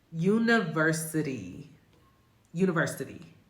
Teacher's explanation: They call it a flap because it's actually created by the tongue hitting the top of the mouth, the roof of the mouth. And it sounds more like a D than a T, but it's a fast D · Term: flap T